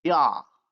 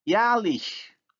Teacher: Now the vowel a has moved from back to front because of the influence of the suffix vowel, which is also front. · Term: umlaut